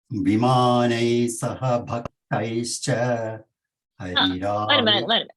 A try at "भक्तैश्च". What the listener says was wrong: Instead of saying bhaktaischa, bhaktaischa, it is not half sa, it is half sh. Bhaktaischa. Bha Mahaprana.